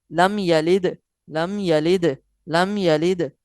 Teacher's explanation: حروف قلقلہ میں سے دال آیا ہے، تو لہٰذا قلقلہ بھی کریں گے